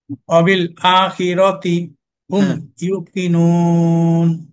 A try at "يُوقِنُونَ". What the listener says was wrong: ইউ আরেকটু টান হবে, ইউকিনুন।